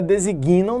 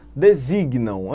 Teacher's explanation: Você traz a tonicidade para o i